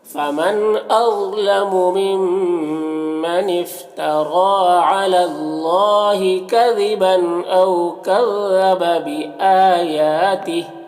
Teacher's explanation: او میں واولین ہے، اسے نرم آواز کے ساتھ جلد پڑھیں گے